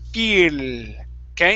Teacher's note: When you're pronouncing that L, you're saying feel, okay, and your tongue is further back.